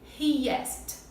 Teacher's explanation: Então a gente adiciona um sonzinho de i fraquinho no meio.